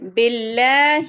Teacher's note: پھر ہے باللہ، لام جلالہ یعنی کہ اللہ کا لام ہے، لیکن اللہ کے لام کے پہلے با پر زیر آ گئی ہے، یعنی کہ کسرہ زیر آ گئی ہے، اس وجہ سے اس کو ہم باریک کر کے پڑھیں گے